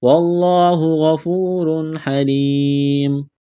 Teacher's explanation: را کے اوپر دو پیش تنوین ہے تو را کو موٹا کرنا ہے. تنوین کے بعد ہا ہے، حروف حلقی ہے تو یہاں پر غنہ نہیں کریں گے، آواز ناک میں نہیں چھپائیں گے